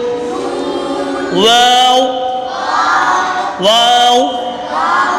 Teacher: دونوں ہونٹوں کی گولائی سے ادا ہوتا ہے، دونوں ہونٹ جب گول ہوتے ہیں تو واو ادا۔